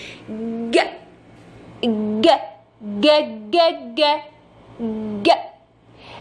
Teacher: الجيم دي عشان اقولها، لو حضرتك جيتي تبصي لشكل لسانك وانت بتقولي الجيم، نقف قدام المراية كده ونشوف، ج ج ج ج ج ج، اللسان بيترفع لحد سقف الحلق شويه من الوسط، وسط اللسان بيترفع